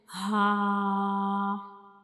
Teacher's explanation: हा तो हा जो यह एक हरूफ हल्की है और यह हमारे हलक के यानी गले के बिल्कुल नीचे वाले हिस्से से अदा होता है